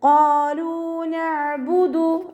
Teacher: ലാമിൻ്റെ കൂടെ വൗ മദ് വന്നു, 2 കൗണ്ട് നീട്ടിക്കൊടുക്കുക